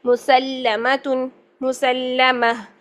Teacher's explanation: پہلے لام ساکن ادا ہو رہا ہے، پھر لا زبر ادا ہو رہی ہے